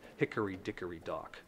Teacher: it depends upon that dactylic arrangement of stressed and unstressed syllables.